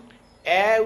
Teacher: আমরা যখন অ্যা উচ্চারণ করি আর অ উচ্চারণ করি তখন জিহ্বা নিম্ন অংশ এবং মধ্য অংশের মাঝামাঝি নিম্ন মধ্য অংশে বাস করে, তাই এগুলিকে বলা হয় নিম্ন মধ্যস্বর।